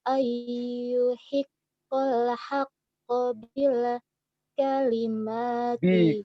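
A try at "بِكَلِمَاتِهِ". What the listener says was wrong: Bika, enggak ada lamnya di situ. Bi kalimatihi.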